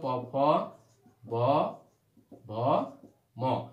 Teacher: তাহলে এই যে প বর্গের ধ্বনি এইগুলো হচ্ছে কি দুই ঠোঁটের মাঝখান দিয়ে উচ্চারণ হয়, অর্থাৎ ঠোঁটের সাহায্য লাগে, এই জন্যই বলে ওষ্ঠধ্বনি